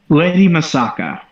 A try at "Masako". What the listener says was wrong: Yeah, you said A, but it's all right.